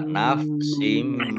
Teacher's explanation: mim tasdid dibaca gunah atau mendengung ditahan dua